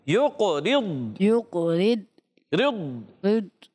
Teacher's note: ضاد میں کلکلہ نہیں کریں گے موٹا کریں گے